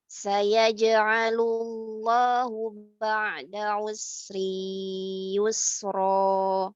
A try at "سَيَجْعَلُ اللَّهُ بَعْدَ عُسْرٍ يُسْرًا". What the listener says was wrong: Nah, itu salah. Itu tidak masuk ke hidungnya itu. Sedikit aja. yusra itu seperti ro yang mensukunkan ya. Sayaj'alullahu ba'da usrin yusra. Rin yusra. Jadi masukkan jangan sampai yusri yusra.